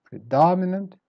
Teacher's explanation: predominant start weak then up and down again